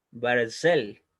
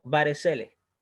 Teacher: Por lo tanto, esta regla dice que no suena vocal cuando está entre dos vocales, o sea, cuando el shba está entre dos vocales, en este caso está al medio de una segol y al medio de una kamatz, por lo tanto, el shba debajo de la resh no va a sonar vocal, por eso se pronuncia Barzel y no Barzele